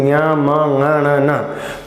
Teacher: वो सब अनुनासिक वर्ण होते हैं क्योंकि उनकी आवाज मुख से तो आती है साथ में नासिका से भी आती है